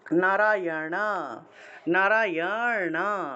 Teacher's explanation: মূর্ধন্য এর উচ্চারণটা হলো মূর্ধা দিয়ে মূর্ধা স্পর্শ করবে জিউভা উল্টিয়ে মূর্ধা স্পর্শ করবে